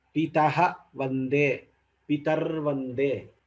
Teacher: After the Visarga, we are having Mridu Vyanjana Vakara. Now Visarga gets replaced by Repha.